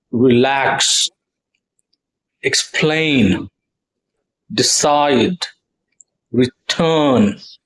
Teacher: So you see the stress is on the second syllable here when it's two-syllable word and the word is a verb.